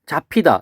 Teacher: 앞에 있는 비읍과 뒤에 있는 히읗이 만나서 이렇게 두 개가 만나서 피읍이 됐죠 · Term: 거센 소리 되기